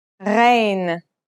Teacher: Its sound is similar to the sound you make when you gargle, a sound that comes from a point deep in the throat.